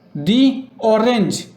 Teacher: অরেঞ্জ অ দিয়ে উচ্চারণ শুরু হচ্ছে, অ একটা ভাওয়েল সাউন্ড হয়, তাই এর আগের দাকে দি উচ্চারণ করব